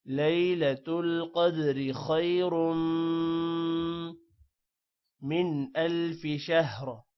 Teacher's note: خیرم کے خا موٹا ہوگا اور را بھی موٹا ہوگا اور میم پر غنہ ہے